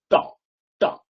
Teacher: জিভটা একদম একদম উপর দিকে তুলে দিয়ে একদম উচ্চারণটা করি। দেখুন, ট উচ্চারণ করুন, জিভ দেখুন উপরের দিকের কোনো একটা জায়গায় গিয়ে ধাক্কা মারছে, একদম মোটামুটি 90 ডিগ্রি অ্যাঙ্গেল করে। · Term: মূর্ধা